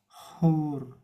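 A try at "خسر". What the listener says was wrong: panjangin. Hur.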